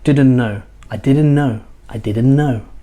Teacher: so what happens the t is lost